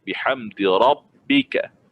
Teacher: Rabbika ada syaddah, kita nabrah tekan rabbika.